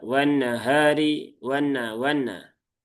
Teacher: Nah, pastikan ditahan dulu tiga harakat. Sempurnakan masukkan ke rongga hidung. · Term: gunahnya